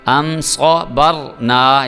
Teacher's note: اس کے بعد یہ میم ساکن آ گیا، میم ساکن کے بعد آ رہا ہے صاد، یہاں پہ ہم نے غنہ بالکل بھی نہیں کرنا، یہ اظہار شفوی والا قانون جو ہے وہ لاگو کریں گے۔